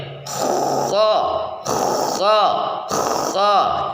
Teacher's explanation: rongga tenggorokan bagian atas sedikit menyempit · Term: huruf kha